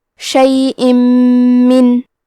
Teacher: یقدرون، کلمت شیئن کے آخری میں حمزہ کے نیچے تنوین زیر ہے، پھر حرف المیم آتا ہے کلمت من، میم حروف الادغام بغنہ میں سے ہے، تو ہم تنوین کو میم میں ملا کے غنہ اور تشدید کے ساتھ یہ حکم کو ادا کریں گے۔